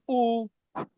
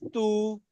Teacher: সবগুলো পেশ উচ্চারণে ঠোট গোল হয়ে যায়